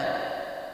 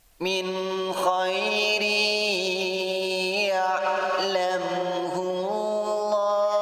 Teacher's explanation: bunyi ra dimasukkan ke ya sambil ditahan dan mendengung selama 2 harakat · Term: idgham bi gunnah